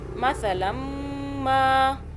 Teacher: یہ جو فا ہے اخفاء کا حرف ہے، اس لیے ہم پچھلے نون ساکن پر جو اس کے اندر چھپا ہوا ہے پڑھنے سے محسوس ہوتا ہے تو یہاں پہ نون کو چھپا کے پڑھیں گے، زبان آپ کے تالو سے ٹچ نہ ہو